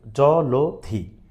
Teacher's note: অয়ের পরে যদি কখনো রস্বইকার থাকে, দীর্ঘইকার থাকে, তাহলে সেই অয়ের উচ্চারণটা সংবৃত হবে, অর্থাৎ ওকারের মতো উচ্চারিত হবে